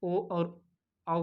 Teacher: इनका उच्चारण स्थान ओ और औ का क्या हो जाएगा? कंठोष्ठ हो जाएगा। कंठोष्ठ, कंठ और ओष्ठ।